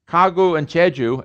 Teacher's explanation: it's a natural phenomenon that it's voiceless initially and it's voiced intervocalicly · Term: voicing and voicelessness